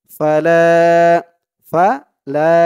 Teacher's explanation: এক আলিফ টান জবরের পরে খালি আলিফ